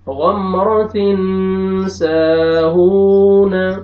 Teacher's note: آگے الف مدہ ہے، الف سے پہلے زبر آ رہا ہے، سین کو آپ نے کھینچنا ہے. آگے دیکھیں واو مدہ ہے، واو جزم سے پہلے پیش آ رہا ہے، ہاں کو بھی آپ نے کھینچنا ہے